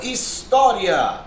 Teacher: A palavra história tem como sílaba tônica o tó, que é uma paroxítona. · Olha lá, mais uma vez um ditongo crescente. Vai do I para o A, da semivogal para a vogal.